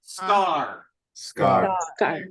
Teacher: That's a ska, and then a long A and the ra.